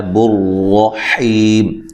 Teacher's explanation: را کو موٹا ادا کرنا ہے. را کے اوپر زبر ہے.